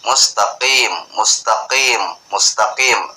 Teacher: vokal yang betul mustaqim mustaqim mustaqim agak tebel dikit ya Hai jangan juga terlalu eh tipis membacanya nanti lari huruf Kaf atau juga jangan terlalu tebal nanti lari ke huruf Ain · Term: huruf qaf